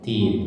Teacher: Harokat kasroh bertemu huruf ya sukun ya. Tin. Jadi dua harakat ya. Atau satu ayunan. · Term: Matobi'i